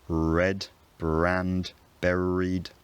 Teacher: a non-rhotic dialect is one where you only pronounce r normally if it comes before a vowel. So it's pronounced normally in red, brand, buried, but you can't hear it in car, nurse, Ford. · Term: non-rhoticity